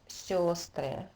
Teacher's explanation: But the unusual part here is that the stress shifts to the first syllable, which turns into yo